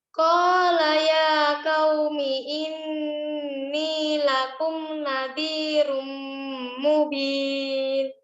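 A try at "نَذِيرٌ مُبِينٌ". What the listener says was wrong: Nanti latihan ketika huruf zal, ya. Zalnya dikeluarkan. Nazi, tadi udah benar, tapi lidahnya kurang keluar sedikit. Nazirum mubin.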